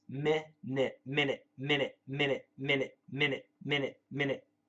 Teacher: I tell my DDM students, for the word minute, M-I-N-U-I-T-E, most Americans will pronounce it M-I-N-I-T with both short I's.